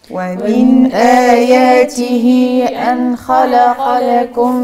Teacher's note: الخا مفخمه اللام مرققه والقاف مفخمه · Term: الخاء مفخمه